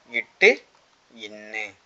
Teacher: நாவின் நுனி அன்னத்தின் நுனியை பொருத்துவதால் பிறக்கும் எழுத்துக்கள்